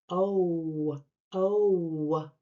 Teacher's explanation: You can even hear a tiny W at the end of the vowel. This is the vowel glide, the shape and sound that follows the vowel.